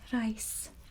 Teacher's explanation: So you've got the roll on the R, and the Y sound, remember, is like an AY.